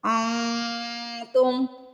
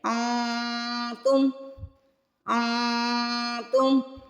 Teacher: تا آ جائے تو وہاں پہ بھی ہم اخفا کرتے ہیں، نون کی آواز کو ناک میں چھپاتے ہیں، چھپا ہوا غنہ کرتے ہیں